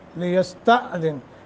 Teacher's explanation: لیستأذن حمزہ ساکن ہے، جھٹکا دے کے پڑھیں گے. دن یہاں غنہ کریں گے یعنی اخفا ہوگا.